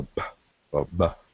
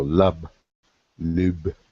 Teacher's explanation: this B sound actually has an aspirant H behind it